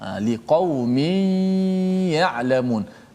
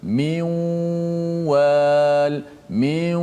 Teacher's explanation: Kemudian dalam pada masa yang sama juga serentak kita mesti melakukan gunnah di hidung. Suara keluar daripada 2 corong, mulut dan juga hidung. Serentak, mula serentak, habis serentak.